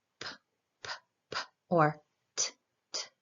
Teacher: There's no vibration in the throat. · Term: non-voiced phonemes